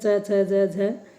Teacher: तालव्य व्यंजन कौन से हैं च छ ज झ क्योंकि इनके उच्चारण में हमारी जीव तालू से टकराती है